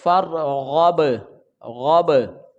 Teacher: با ساکن ہے تو یہاں پر حروف قلقلہ ہوگا. اس کو جنبش کے ساتھ پڑھیں گے تو آواز لوٹ کر آئے گی